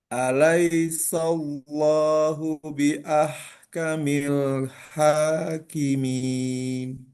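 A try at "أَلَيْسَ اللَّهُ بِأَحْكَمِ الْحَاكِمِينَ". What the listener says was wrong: Nah, di sini hati-hati jangan solo, sallo. Tetap sinnya tipis. Alaisallo, sallo.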